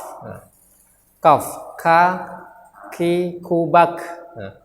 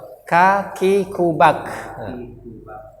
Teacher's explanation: Ada hamas yang keluar. Hamas itu adalah udara yang keluar.